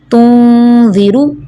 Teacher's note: اخفا میں ناک کے بانسے میں آواز چھپانی ہوتی ہے۔